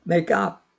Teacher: make의 크가 up 모음과 연계되어서 발음이 되죠